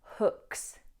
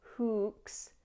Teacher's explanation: The only pronunciation pointer I would give here is not to lengthen the double O. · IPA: /hook/